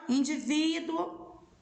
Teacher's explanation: Ditongo crescente porque eu tenho semivogal U, né? E depois eu tenho a vogal O, tá? Por isso, então, as palavras destacadas recebem acento pela mesma regra?